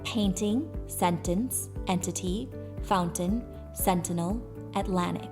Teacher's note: the T sound is elided, suppressed or omitted, or even glottalized in the following and similar words where T follows N